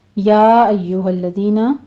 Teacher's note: یا میں مد منفصل جائز ہے، 4 کاؤنٹ کریں گے ، ایو یا پر تشدید ہے سختی کیجئے، الذین لام پر